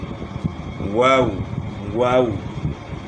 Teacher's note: جب آپ واو کی ادائیگی میں ہونٹ گول کریں گے تو وہ اس طرح ہوگا کہ کنارے تو آپس میں ملے ہوں گے، درمیان سے ایک غنچہ سا بن جائے گا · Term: واو مدہ